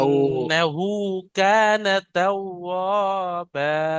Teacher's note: ওয়াওর উপরে তাসদিদ আছে, ওয়াও দুবার উচ্চারণ হবে